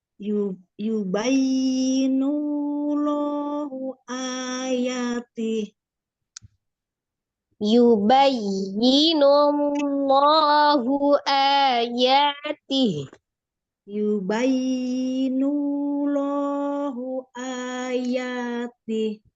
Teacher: Lam jalalah dibaca tafhim karena ada huruf berharokat sebelumnya, berharokat dhammah